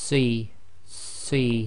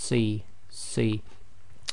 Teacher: So you're making a full mouth, i.e. your mouth is almost round, your lips are just about making a round circle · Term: proper full mouth